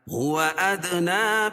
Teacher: نا کھڑا زبر قائم مقام الف مدہ کے، اس کو ایک الف کے برابر کھینچ کے پڑھیں گے